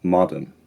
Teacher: Like with Queen Victoria, the vowel in marvel is a bit fronted, marvel, and the got vowel is distinctly unrounded